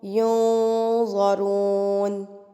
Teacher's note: اب یہ نون ساکن ہے اور نون ساکن کے بعد یہ ضا آ گیا، تو یہاں پر ہیوی اخفا کیا جائے گا، موٹا اخفا